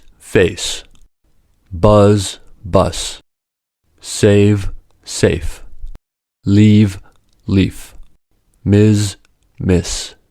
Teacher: These are examples of minimal pairs where two words differ only in the voicing of the ending sound: one is voiced, and the other is not voiced. For this reason, they differ in vowel length. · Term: pre-fortis clipping